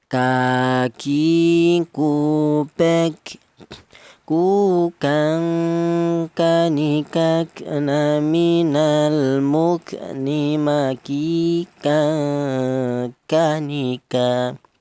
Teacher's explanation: Huruf kaf ini keluarnya huruf berasal dari pangkal lidah yaitu kaf. Di mana pangkal lidah itu ditempati 2 huruf yaitu huruf kaf dan huruf qaf ya.